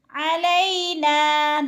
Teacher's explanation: نا پہ الف مدہ ہے، نا کو کھینچ کر پڑھنا ہے